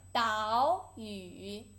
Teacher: there's two third tone you should pronounce the first one into second tone